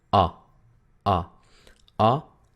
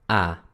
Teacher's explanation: la A corta era O, O, y la A larga, A